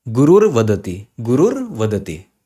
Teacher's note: So this becomes U plus Ra plus Va. In place of visarga, you get a Ra. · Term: Rutva Sandhi